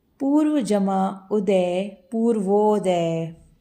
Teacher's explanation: यहाँ अ और ऊ मिलकर ओ में परिवर्तित हुए हैं